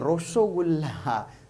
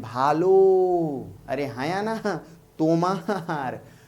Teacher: इन स्वरों के उच्चारण में ओठ गोल हो रहा है, बंगला जो भाषी हैं, बंगला बोलने वाले लोग, वो कहते हैं रसोगुल्ला, देखिएगा होठ गोल हो जाता है